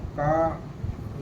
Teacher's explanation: कंठ व्यंजन है, कंठ से बोली जाती है